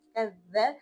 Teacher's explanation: کاف کی زبر کے ساتھ دال کو ملا کر پڑھیں گے، کاف دال زبر کذ، دال زبر ذ، کذ۔ اور دال کی نرمی کو برقرار رکھنا ہے، زا کی طرح یا وا کی طرح نہیں پڑھنا